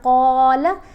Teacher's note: قاف کے اوپر زبر ہے، 7 الف ہے، تو ہم نے قاف کو لمبا کیا، قاف کو موٹا بھی پڑھنا ہے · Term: حرف مدہ